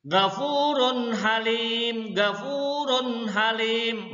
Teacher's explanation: Runnya jelas bertemu dengan ha. Domah tain bertemu dengan ha. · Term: ijhar